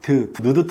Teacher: 혀가 입 속에 붙을 수밖에 없습니다. 즉 혀 끝에서 나는 소리죠. 그래서 니은, 디귿, 티귿은 혀소리인데 이게 혀설자 써서 혀소리인데요.